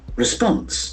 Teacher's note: The accent falls on the second syllable, response.